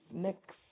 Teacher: It's just 2 letters, but the X itself is realized as 2 sounds, k and s